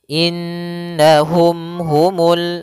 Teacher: bertemu dengan ha maka hukumnya kita hukumi dengan izhar syafawi maka mimnya tidak boleh ditahan gunahnya tidak boleh innahum atau innahum ya langsung saja innahum humul nah seperti itu